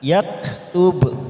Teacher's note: Ada huruf ba sukun, maka kita pantulkan